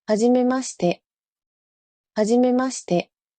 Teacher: In natural, fast speech, the I in shi is often whispered, devoiced, making it sound like hajimemashite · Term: Devoicing